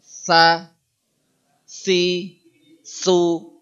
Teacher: tsa itu ngucapin es tapi lidahnya naik ke ke atas